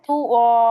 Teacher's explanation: এক জবর বাদ দিয়ে এক জবর ধরে এক আলিফ টেনে পড়তে হবে